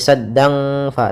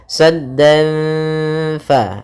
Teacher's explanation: Kita samarkan dengan huruf fa, maka saddan fa, langsung bukan lagi saddang fa tapi saddan fa gitu ya. Kita tahan gunnahnya sambil kita samarkan suara tanwinnya kepada huruf fa. Kemudian kita kita tahan gunnahnya 2 harakat. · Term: ikhfa hakiki